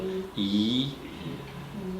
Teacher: Part of your tongue, at least in my pronunciation, touches the top of their mouth, but it's not the tip the way L does.